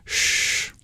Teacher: instead of arching our tongue up to the pallet we um pull our tongue back in retroflex it sounds a little darker